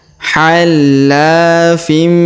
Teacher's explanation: Huruf tanwin in bertemu mim bertasdid, maka tanwin innya melebur masuk ke huruf mim bertasdid ya. Hallafim. Ditahan dan didengungkan 2-3 harokat.